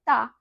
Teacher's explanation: आपकी जो जीभ है आपके दांतों को स्पर्श कर रही है